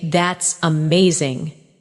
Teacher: When you say, that's amazing, your tone rises with excitement.